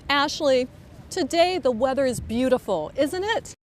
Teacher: one way is to make your voice go up this happens when the speaker is asking a question and once · notice how voice goes up when she says the tag question